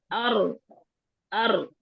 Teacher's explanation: ठीक है, रॉ में आवाज ना तो एकदम हम रोकेंगे और एकदम से बंद भी नहीं करेंगे, और ना बहुत लंबी दाल की आवाज ज्यादा चलेगी रॉ की निस्बत। रॉ में आवाज चलेगी सही, लेकिन बहुत ज्यादा नहीं चलेगी, तवस्सुत यानी कि दरमियानी सी कैफियत होगी, शिद्दा और इखावा के दरमियानी कैफियत। · ये रा की साउंड जो है उसमें रेपिटेशन पाई जाएगी, तकरार सी महसूस होगी। और वो तकरार बहुत ज्यादा लंबी नहीं होनी चाहिए, इस तरह नहीं, लंबी नहीं होनी चाहिए।